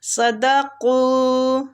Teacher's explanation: صاد بھی مستعلیہ قاف بھی مستعلیہ دونوں کو پور پڑھیں گے